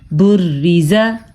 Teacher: را کو ہم نے باریک پڑھا ہے کیونکہ را کے نیچے زیر ہے۔ جب نا کے نیچے زیر ہو تو را باریک پڑھی جاتی ہے، جب را کے اوپر زبر اور پیش ہو تو را کو پر یعنی موٹا کر کے پڑھا جاتا ہے۔